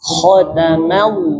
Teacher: jangan maullah, tapi ma tipis lam tebal.